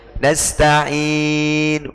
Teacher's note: Nasta'in itu sepertiganya harokat, namanya waqaf raum. Nasta'in. Dikit sekali.